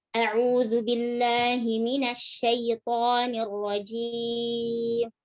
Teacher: Nah, ini a-nya tidak sadar, kita tuh telah memanjangkannya. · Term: tamtid